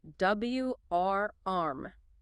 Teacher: For warm, your lips should form an O shape at the start, and there's a clear pronounced American R sound pulling back from the throat. W-R-arm. Just one smooth syllable.